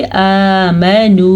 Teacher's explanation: आमनू, ये वाव मद्दा है। वाव साकिन से पहले जब पेश आ जाएगी तो वो वाव मद्दा होगा, उसे खींच के पढ़ेंगे, यानी कि आमनू।